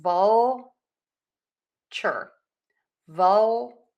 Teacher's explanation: So if it's really difficult for you and you really want to say vulture instead of voucher, think about really hitting the teeth for that L. Vulture.